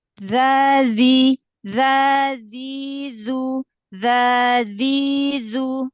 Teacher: makhraj hurufal itu ujung lidah ketemu dengan ujung gigi seri atas · asal nempel aja ujung lidah dengan ujung gigi seri atas